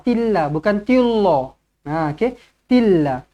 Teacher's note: lafzul jalalah di sini dibaca dengan nipis